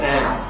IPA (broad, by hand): æə